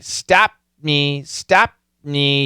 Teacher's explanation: that m is going to swallow the T